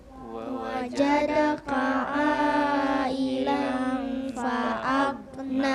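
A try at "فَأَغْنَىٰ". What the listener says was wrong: Nah, masih ada yang mau kasih pantul. Fa'agna. Kebiasaan, ulang.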